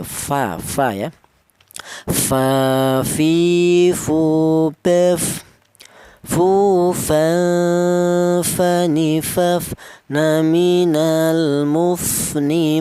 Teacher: Untuk huruf fa. Huruf fa ini knya huruf berasal dari bibir bawah bagian dalam menyentuh e ujung gigi sehari atas